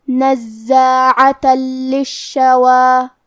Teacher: کلمت نزاعہ یہاں زے پہ تشدید ہے تو ہمیں دو حرف کے برابر زے کو پڑھنا ہے. حرف العین کی ادائیگی حلق کے درمیان والے حصے سے ہے. آخری میں تا پہ تنوین زبر ہے.